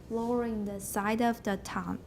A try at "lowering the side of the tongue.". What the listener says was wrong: That was good. Rhythm-wise, you missed an S.